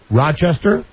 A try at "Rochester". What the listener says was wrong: Rochester. You don't pronounce the S in it. It's Rochester.